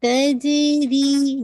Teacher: जीम पे देखे कलकला करेंगे और री को आपने 2 काउंट पढ़ना है